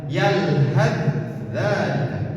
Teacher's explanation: Jadi bukan disukunkan, tetapi ditasydidkan. Huruf yang pertama fa dimasukkan kepada huruf dza. Jadi yang dibaca hanya huruf dza.